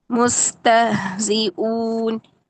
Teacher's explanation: تہ یہ جھٹکا سا نہیں دینا آپ نے، جیسے ہم حمزہ میں جا کے آواز بند کرتے ہیں. آواز کو جاری رکھیں نرمی کے ساتھ.